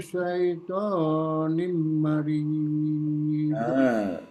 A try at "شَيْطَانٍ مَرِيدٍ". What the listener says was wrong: Kalau ada tanwin bertemu huruf mim, coba dengungnya lebih disempurnakan, ya.